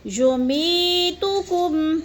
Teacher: کم میں غنہ نہیں کرنا، اظہار شفوی ہے